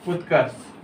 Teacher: क वर्ग तथा रकार के बाद स का मतलब दंते स का मूर्धन्य स हो जाता है। जैसे उदाहरण उत्कर्ष।